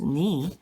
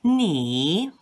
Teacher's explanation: Ni, which means you, has accent number 3. You can see it goes down and then back up. So ni is not just pronounced ni, but it's pronounced ni.